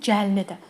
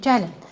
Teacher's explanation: Deməli vurğusuna görə mənası dəyişən versiyası. Birinci də gəlin sözündə, yəni evimizin gəlinidir. Vurğu sona düşdü. Amma əmr edəndə gəlin vurğu əvvələ düşdü.